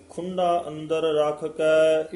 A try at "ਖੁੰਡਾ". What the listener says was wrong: ਇਹ ਵੀ ਖੁੰਡਾ ਡੱਡੇ ਨਾਲ ਨਹੀਂ ਬੋਲਣਾ, ਢੱਡਾ ਥੋੜਾ ਜਿਹਾ ਦੱਬ ਕੇ ਭਾਰਾ ਉਚਾਰਨ ਕਰਨਾ ਹੈ।